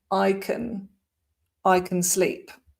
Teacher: it's actually pronounced kun most of the time when we're not emphasizing it